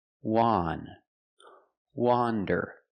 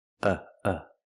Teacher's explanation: Wander is pronounced with a short o sound, the sound ah, like you hear in hot and stop. Wan. Wander. It's an open sound.